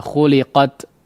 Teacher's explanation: Nah, kemudian yang kita garis bawahi juga yang perlu diperhatikan adalah huruf ta yang kondisinya sukun yang berada di akhir ayat ya, diperhatikan pengucapan hamsnya ya. Pengucapan sifat hamsnya ya. Jangan terlalu berlebihan ya